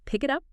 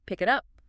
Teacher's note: The k sound links to it. And the t sound from it links to up.